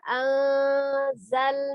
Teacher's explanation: ada nun sukun bertemu dengan zai dihukumi ikhfa, dibaca samar ya.